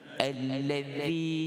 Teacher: Alladhi ahsana, iaitu bacaan hamzah wasal dibaris dengan fathah. Alladhi, kita tekan syaddah pada lam, lam tasydid fathah, iaitu lepas kita sebut huruf lam ni, huruf zal dengan baris kasrah ni.